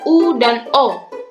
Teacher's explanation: Yang ketiga, vokal belakang, yakni vokal yang dihasilkan oleh gerakan turun naiknya lidah bagian belakang atau pangkal lidah seperti huruf U dan O.